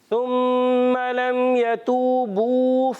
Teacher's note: ثم لم يتوبوا، ثم لم يتوبوا فلهم عذاب جہنم، ثم صحیح ساتھ آپ نے پھر جو ہے واو مدہ چھوڑ دیا. یتوبو بیٹا کھینچیں گے ایک الف